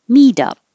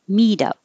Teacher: The T changes to a D.